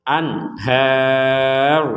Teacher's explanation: Di sini ada nun sukun bertemu ha. Nun sukun bertemu ha ini kita membacanya dengan jelas.